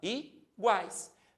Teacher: Percebam que o guais sai tudo num único som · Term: tritongo